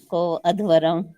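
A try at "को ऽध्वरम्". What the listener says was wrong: अ नहीं बोलना है ना। वो जब अवग्रह आ जाता है ना, पहले में लग जाएगा ना, पूर्व रूप है। को वो ध्वरम, वो ध्वरम, वो ध्वरम को अलग शब्द है, वो हो गया वो ध्वरम, वो ध्वरम, ध्वरम।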